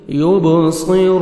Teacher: با حروف قلقلہ میں سے ہے، ڈبل ساؤنڈ آئے گا، صاد کو موٹا کر کے پڑھیں گے، را کو مرپیش ہے، آپ نے را کو موٹا کرنا ہے، اور واو مدہ ہے، را کو 1 سیکنڈ کھینچنا بھی ہے، لاسٹ میں نون ساکن ہو جائے گا جب سٹاپ کریں گے۔